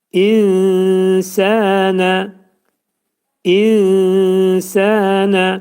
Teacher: nun hərfi sin hərfinə yetişdiyinə görə nə olur? İxva olur. Yəni nun üçdə bir hissəsi sin hərfində gizlədilir.